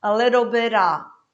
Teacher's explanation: Esse F, que teria na verdade um som de V, eu vou cortar.